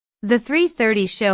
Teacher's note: Notice the emphasis on 3:30.